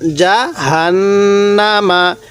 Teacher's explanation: নুনের উপর তাজদিদ আছে এজন্য আমরা এখানে গুন্নাহ করব জাহান্নামা এই যে দেখুন নুনের উপর তাজিদ আছে যার কারণে এখানে